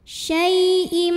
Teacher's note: Ada huruf lin sebab ada ya sukun didahului baris fathah, maka dibacanya lembut. Syai'im. Kemudian ada hukum idgham bi gunnah.